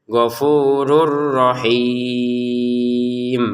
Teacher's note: tanwinnya di sini masukin ke ro sehingga cara bacanya gfurur rahim